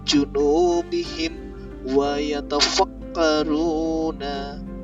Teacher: Hukum ini masuk dalam hukum mim sukun bertemu dengan wawu, maka ini harus dibaca jelas. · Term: idhar syafawi